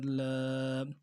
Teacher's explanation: لام کے کھڑا زبر کو ایک الف کی مقدار میں کھینچیں گے۔ لام کھڑا زبر لا، ای لا، دونوں کو برابر کھینچیں گے، کھڑی زیر کو بھی اور کھڑا زبر کو۔